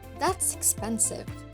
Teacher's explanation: we know that the stress is on the second syllable of expensive so we raise the bar to three and down for the rest of the syllables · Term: shift